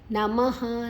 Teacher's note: ಮದ ನಂತರ ವಿಸರ್ಗದ ಉಚ್ಚಾರಣೆ ಹ